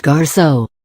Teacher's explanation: is pronounced garçon, with a soft, nasal O